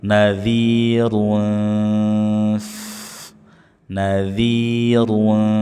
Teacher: Kita baca dengan samar sambil bibir persiapan mengucapkan huruf fa. Jadi bibir sudah ancang-ancang mengucapkan huruf fa. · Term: Ikhfa